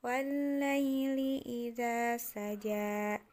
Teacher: bawah itu namanya Alif maksurah dibaca panjang wallaili idza saja saja jadi ja-nya itu jimnya itu dibaca panjang